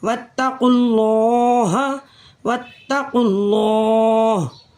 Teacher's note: اسی طریقے سے واو خالی ہے الف خالی ہے یہ الف بھی خالی ہے تو ان تینوں کو ہم نہیں پڑھیں گے. قاف کے ساتھ ڈائریکٹ لام مشدد کو ملائیں گے.